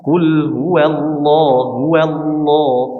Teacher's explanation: Coba wallahu, ya, jangan sampai huruf wawnya mengikuti ketebalan huruf lamnya